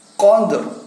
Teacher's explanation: Suara dalnya disukunkan, tapi suara ro-nya kita bentuk di dalam rongga mulut kita sehingga membunyikannya menjadi lailatul qadr.